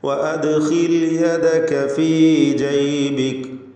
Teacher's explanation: ദാലിന് ഖൽഖല സുഗ്റ നൽകണം, സുക്കൂൻ വന്നതുകൊണ്ട്. വഅദ്ഖിൽ എന്ന് ശബ്ദം ചലിപ്പിച്ചുകൊണ്ട് ഉച്ചരിക്കുക ദാലിന്.